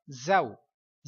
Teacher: اب یہ زا ہے، اس حرف کو پڑھتے ہوئے سیٹی کی آواز واضح آنی چاہیے